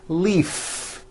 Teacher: if you stop the voicing at the end of the vowel e then you would be saying leaf with an unvoiced f